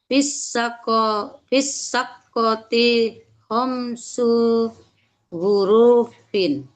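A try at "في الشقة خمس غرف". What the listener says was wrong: Ro, ro-nya pendek. Fisyaqqati pakai shin ya.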